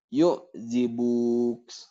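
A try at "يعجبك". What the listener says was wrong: Kenapa panjang? Kenapa panjang? Ayo, pendekin.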